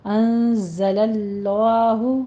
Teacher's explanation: انزلہ میں نون ساکن کا قاعدہ اخفا حقیقی آ رہا ہے، یہاں بھی 2 کاؤنٹ کرنے ہیں، زائی کی آواز کو سیٹی کے ساتھ ادا کرنا ہے۔ انزل اللہ، لفظ جلالہ کو پور پڑھیں گے، درمیان والے لام کو۔